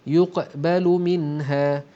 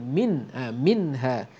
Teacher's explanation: nun mati bertemu dengan ha, hukumnya izhar halqi, dibaca dengan terang dan jelas